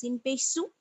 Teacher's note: सीन का मखरज आपको मालूम होना चाहिए, जुबान की नोक और सनाए सुफला का किनारा